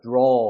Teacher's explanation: 어가 턱이 조금 더 벌어지면서 어를 잡아 끄는 느낌으로 발음을 해야 되는 거예요